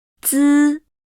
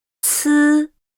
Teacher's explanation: 滋 And 呲 the front part of the tongue tip touches the inner surface of the upper teeth and then immediately parts with it, forming a gap in between. 滋 Is pronounced with no strong airflow, while 呲 comes with an obvious airflow.